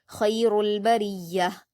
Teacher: बरिया के र को बारीक पढ़ेंगे